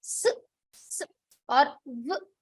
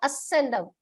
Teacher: they may add an akara slightly before the vyanjana, or they may add an ikara before the vyanjana. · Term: Halanta Varna